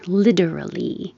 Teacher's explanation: The T changes to a D.